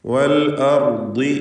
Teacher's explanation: വാവ് സൂക്ഷിക്കേണ്ടത് അതിൻ്റെ ചുണ്ടുകളിൽ നിന്ന് തന്നെ ഉച്ചരിക്കപ്പെടണം എന്നതാണ്.